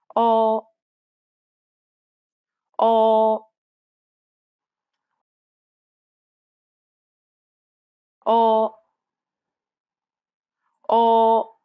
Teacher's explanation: it's identical to the o in or however there should be more of a vibration at the base of your throat